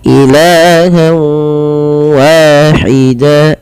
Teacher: Idgham artinya memasukkan, bi gunnah disertai dengan gunnah. Apa yang dimasukkan adalah bunyi suara nun kepada bunyi waw. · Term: idgham bi gunnah